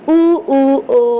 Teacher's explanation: को पहचानना है वृत्ताकार और अवता का को दो है तो वृत्ताकार जिसमें ओठ गोल हो जा रहा है